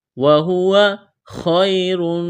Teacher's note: خا کو موٹا کرنا ہے، یا لین ہے، را کو موٹا کریں گے